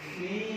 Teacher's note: Berarti langkah pertama gigi atas temu bibir bawah bagian dalam. Langkah kedua i fi.